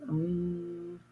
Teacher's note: Notice I'm putting my lips together. It's just a line there and making a sound.